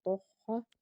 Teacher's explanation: تا کو پر پڑھیں گے کیونکہ حرف مستعلیہ کا حرف، آگے ہا کے اوپر تشدید، ہا کو دو پر پڑھیں گے۔